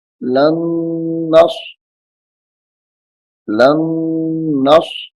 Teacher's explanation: اور اس نون کو صاد کے ساتھ، لام نون زبر لن، غنہ بھی کریں گے ساتھ کیونکہ نون مشدد ہے